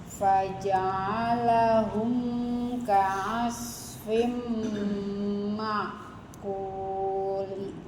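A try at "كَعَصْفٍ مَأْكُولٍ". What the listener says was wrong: dibaca berarti dua harokat kulit. Oke, hati-hati hamzah sukunnya ya. Jangan arahnya ke ain. Makulin. Langsung ada makulin.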